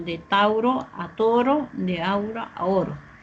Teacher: El diptongo tenemos aquí au, en cambio pasó a uno solo